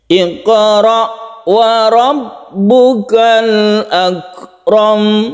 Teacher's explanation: Jadi warobnya yang ditinggikan ya.